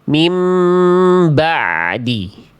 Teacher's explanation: huruf ain yang tidak memantul tapi mengalir sedikit suara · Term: ain sukun